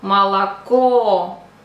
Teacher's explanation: So the accent is on the third O, молоко. So the first two O we have to pronounce like A, молоко.